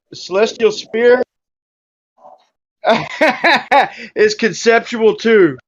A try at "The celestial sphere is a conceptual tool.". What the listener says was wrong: No, read it properly. It's a conceptual tool. It's not conceptual too.